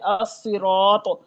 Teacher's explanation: یہ خوب موٹے اور خوب بھرے ہوئے پڑے جاتے ہیں مطبقہ حروف